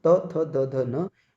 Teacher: बात करें त थ द ध न, तो ये दंत उच्चारण स्थान है इसका, यानी इनके उच्चारण में जो हमारी जीभ है वो दांतों को स्पर्श करती है, तब इनका उच्चारण होता है।